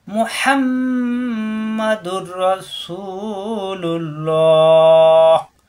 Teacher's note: তানবিনের পরে আসছে র, এই রয়ের তাজদিদ ধরে মিলাতে হবে, গুণনা হবে না। এই দুই পেশের এক পেশ রয়ের সাথে মিলবে।